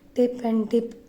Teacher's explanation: Initial consonant sound of English word tip and dip are alveolar plosive. Alveolar plosive वो consonants जिनमें speech sound को produce करते समय blade of tongue and teeth ridge use होते हैं और साथ ही एक्सप्लोजिव नॉइज प्रोड्यूस होती हैं।